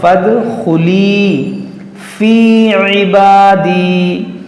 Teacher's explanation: یہاں پر دیکھیں دال میں قلقلہ ہوگا